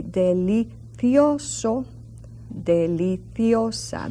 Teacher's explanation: And in Spain, Castilian, they would say delicioso, deliciosa, that TH sound on the C and the Z.